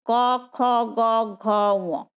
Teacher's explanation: আমাদের কণ্ঠতে জিভের একদম শেষ অংশটা স্পর্শ হচ্ছে, ক খ গ ঘ ঙ, সেখানে যেহেতু কণ্ঠতে স্পর্শ হচ্ছে সেহেতু আমরা বলি একে কণ্ঠবর্ণ।